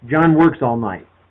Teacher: every word is a content word every word is stressed